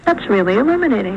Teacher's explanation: you can see as well that the f zero contour has not really descended at all from this initial high star so it's not not down stepped at all remember i said